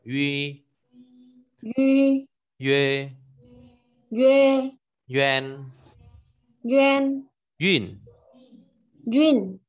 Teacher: chữ u có hai chấm ở trên đầu ấy, thì đọc là uy, tròn môi